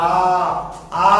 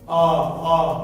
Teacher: কিন্তু আমি যখন এই আ যেমন করে বললাম, অ অমন করে বল খুলবো, কিন্তু একবারে পুরা না, অ, অ। তাহলে বেশি খোলা বিবৃত, একটু কম খোলা অর্ধ বিবৃত।